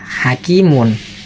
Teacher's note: seakan-akan setelah mim dhamma hakimun ini ada nun sukun di belakangnya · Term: tanwin dhamma